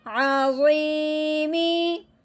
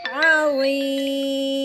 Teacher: تو ہم نے کیا کرنا ہے کہ وقف کی وجہ سے اس میم کی جو زیر ہے کسرہ ہے اس کو گرا دینا ہے، اس کو ہٹا دینا ہے، پیچھے خالی ہو جائے گا میم، یعنی کہ میم ساکن ہو جائے گا، کوئی زبر زیر پیش نہیں ہے، وقف کی وجہ سے آخر والے حرف کو ساکن کیا، یعنی کہ میم متحرک کو ساکن کر دیا